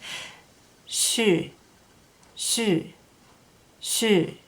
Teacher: It sounds a little like an SH sound, shh, except in English when we make an SH sound, we close our teeth more, and in Maidu it's made a little differently. It's almost like a little whistle with the lips a little more rounded, and I think using the tongue to make this sound. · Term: Maidu S